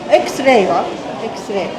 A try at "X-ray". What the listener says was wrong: The issue with X-ray is that you're not really pronouncing the X. You're just saying X, X-ray, So for X, you would say like Xmas.